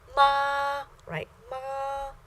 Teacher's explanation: the first tone is a high level tone, stays the same level. So you start at the highest point of your personal register, sustain it for a second, and then you end at the highest point of your personal register.